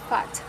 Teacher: Then we have the phoneme which is voiceless, labial dental because the lower lip touches the upper teeth, is fricative because the air is forced through a narrow constriction